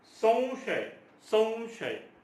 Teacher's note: स चा जो उच्चार आहे, हा अनुस्वार जो आहे हा पूर्ण स वर आहे आणि श हा स्वतंत्र होतो.